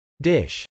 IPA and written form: dˈɪʃ (dish)